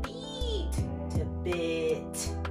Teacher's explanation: the I sound is a bit lower in the mouth, that I'm moving down